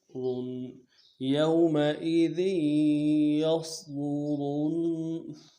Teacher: را نون پیش رن، را کو موٹا کرنا ہے، آگے نون تشدید اس کے ساتھ ملانا ہے، الف بھی نہیں پڑھیں گے، لام بھی نہیں پڑھیں گے، ڈائریکٹ را کو نون کے ساتھ ملائیں گے۔